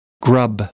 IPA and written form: grʌb (grub)